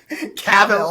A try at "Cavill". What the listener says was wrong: Henry Cavill. You're putting too much. You're putting too much emphasis on the wrong syllable.